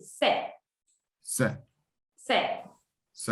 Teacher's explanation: Ici, je prononce c'est, sans prononcer le S et le T.